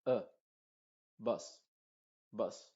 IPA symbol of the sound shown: bʌs